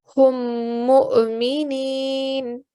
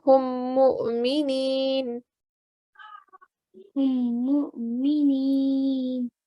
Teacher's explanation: So whenever you see something like that appear on a vowel, like a little hamza on top, the hamza will always take priority. So you will recite the hamza with the sukoon, but remember to give a soft jerking sound.